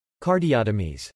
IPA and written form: kɑɹdiowtəmiz (Cardiotomies)